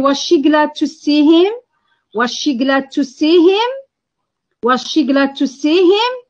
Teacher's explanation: for yes no questions the intonation is rising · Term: rising intonation